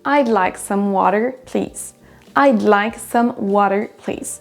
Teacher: Les mots like et water vont ressortir plus que les autres. Le pronom je, I, va être vraiment raccourci, réduit.